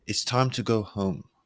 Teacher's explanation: your voice lowering on home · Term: downward inflection